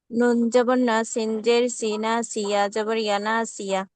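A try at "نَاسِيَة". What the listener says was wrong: আবার নুনে টান হয়ে যাচ্ছে, নাসিয়া। এভাবে হয়ে যাচ্ছে, নাসিয়া তাড়াতাড়ি। হ্যাঁ, নাসিয়া তাড়াতাড়ি। পড়তে পারেন, নাসিয়া এভাবে যেন না, আলাদা যেন না হয়। নাসিয়া আমরা এভাবে পড়বো না, সবগুলো এক পরিমাণ টান দিব। নাসিয়া, নাসিয়া।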